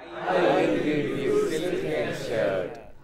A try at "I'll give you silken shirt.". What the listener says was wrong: Shirt has a long vowel. It is shirt.